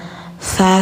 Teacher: lidah ujung tempel gigi atas